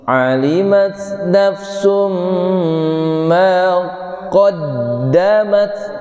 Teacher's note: Nafsum berarti ditahan lama, masuk rongga hidung. Kalau mim masuk rongga hidung ketika bertasdid. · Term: mim tasdid